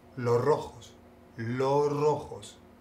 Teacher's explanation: En España, por lo menos, en vez de decir, si van a decir la palabra los o las y luego una palabra que empieza con la R, lo que hacen es que le quitan la S de los o las. Por ejemplo, en vez de decir los rojos, dicen los rojos, los rojos.